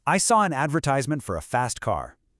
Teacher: the stress on advertisement and of course that really strong R sound in car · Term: American English